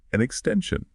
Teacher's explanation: the N sound from the article an naturally links onto the vowel sound at the start of extension. And for the word extension, the stress is right in the middle. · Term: linking